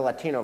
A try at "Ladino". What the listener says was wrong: The Ladino. With D, not with T.